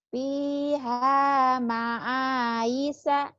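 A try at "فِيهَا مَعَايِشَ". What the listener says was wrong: Hutang shin ya. Nanti hutang shinnya belajar sama tadi ya Khalifah tuh. Fiha ma'aisha.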